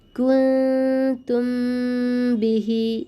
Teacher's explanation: মিম সাকিনের বামে বা হলে মিমকে গুণনা করে পড়তে হবে। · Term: ইখফায়ে শাফই